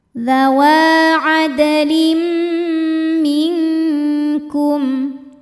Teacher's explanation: Ada hukum izhar syafawi sebab ada mim sukun yang menghadapi huruf selain mim dan ba, yaitu huruf hamzah. Maka mim sukun dibaca dengan jelas, terang ya. Jadi bunyinya M dan tidak ditahan.